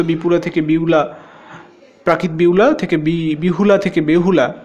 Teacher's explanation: এখানে মধ্য ব্যঞ্জনাগম হয়েছে এবং হ শ্রুতির আগমন হয়েছে